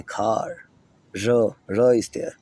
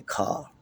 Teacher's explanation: Americans have rhoticity in post-vocalic R's. which the R's that come after vowel sound, they do pronounce it. They say car, r is there. · They rather minimize the sound of R that comes after a vowel sound.